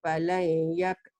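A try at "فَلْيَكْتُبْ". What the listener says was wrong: bukan falai. Fal yaktub. Mati.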